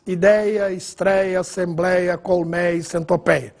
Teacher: escrevemos sem acento, mas não muda a pronúncia. Continua pronúncia com timbre aberto, mas sem acento agudo. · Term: ditongo aberto